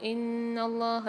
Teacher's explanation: اللہ کے لام کو موٹا پڑھیں گے اور کھینچ کے پڑھیں گے